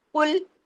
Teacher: آگے heavy letter آ گیا، قل، قاف سے، قاف ہیوی لام باریک